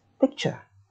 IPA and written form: pɪktʃə (picture)